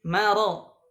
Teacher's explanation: Kemudian di kalimat kata maradun, maro, ya, ma-nya tipis, ra-nya tebal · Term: takhlisul huruf